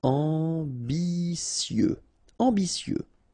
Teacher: Ambitieux, final X not pronounced, and then remember that you get this T, I, and then vowel, so si.